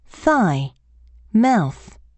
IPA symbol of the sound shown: θ